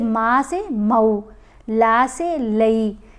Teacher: حروف لین جو ہیں ان کی آواز سلائیڈ ہوتی ہوئی آواز ہے، تھوڑی سی ٹیڑھی آواز ہو جاتی ہے